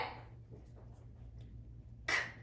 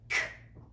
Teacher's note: K is an unvoiced sound because we cannot feel the vibrations in our throat when we make that sound.